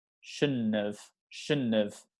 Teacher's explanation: you don't really need to pronounce this d sound